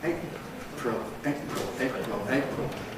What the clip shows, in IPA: ˈeɪʔprəl